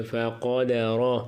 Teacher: قاف کو موٹا کریں گے